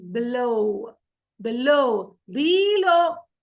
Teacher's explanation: So, we're stressing on the second syllable.